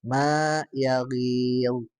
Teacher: ma-nya itu adalah tipis ya dan alif madiyah itu yang panjang itu ya